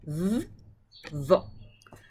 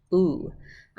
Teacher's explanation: the oo sound kicks out the v sound entirely, and it becomes oo. It just says oo, like moon, like oo.